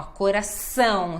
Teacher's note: tem que dar ênfase no ão